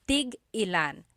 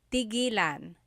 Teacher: when there's a hyphen in it, you have to have that glottal stop